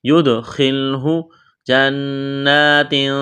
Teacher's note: غنہ کریں گے، آواز ناک میں چھپائیں گے، اخفا کریں گے، تنوین کے بعد تا ہے